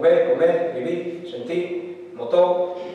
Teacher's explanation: La pérdida de la R, al final